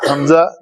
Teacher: یہ حمزہ ہے، حمزہ جوف دین سے ادا ہوتا ہے حمزہ، تو یہ ام بی اونی، ٹھیک ہے۔ حمزہ اقصا حلق